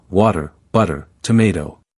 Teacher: the Ts are between vowel sounds, and this pattern softens their pronunciation